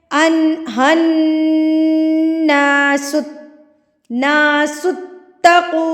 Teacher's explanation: غنہ کہتے ہیں ناک میں آواز کو لے کر جانا، آپ نے اس کو لمبا غنہ کرنا ہے